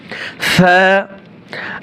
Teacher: আলিফ টান হয় তা সা হরফটা এক আলিফ টান হবে এবং জিহ্বার আগা উপরে দাঁতের আগার সাথে লাগিয়ে নরম করে নরম করে